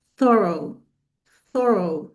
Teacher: The th in the beginning is a soft th sound. Is the voiceless th. It's like when you say the the in Arabic, just like when you say the the letter in Arabic, thorough.